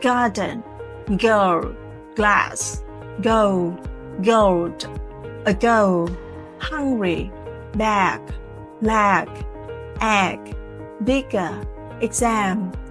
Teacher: there is voicing vibrations from the throat when you say G. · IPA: /g/